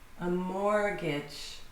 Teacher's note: The T is silent, completely silent. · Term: silent T